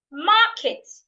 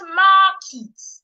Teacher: In the word market, I also need to say the first part louder, longer, and clearer.